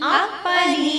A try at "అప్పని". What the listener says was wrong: ఆ ఆని కూడా దీర్ఘం ఇస్తున్నట్లు పలకకుండా కరెక్ట్గా అప్పని